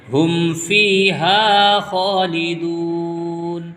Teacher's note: الف مدہ اور یہ واو مدہ دونوں کو کھینچ کے پڑھیں گے